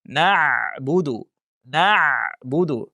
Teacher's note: nun harfida bor, lekin ayn harfida g'unna sifati mavjud emas